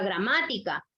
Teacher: Última, penúltima, y la sílaba tónica la tiene en ma, que es antepenúltima